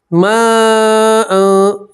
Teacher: یہاں مد متصل ہے، حرف مد کے بعد حمزہ ساتھ میں ملا ہوا ہے، ٹھیک ہے۔ تو یہاں آپ 4 الف کے برابر کھینچیں گے